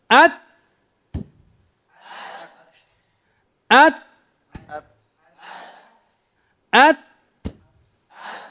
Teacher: أولا نحبس ثم نهمس. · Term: التاء